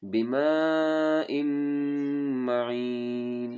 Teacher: यअतीकुम बिमाइन मईन, इसको 4 से 5 अलिफ के बराबर मत करेंगे और हमज़ा को मीम के साथ मिला के मीम को गुन्ना करेंगे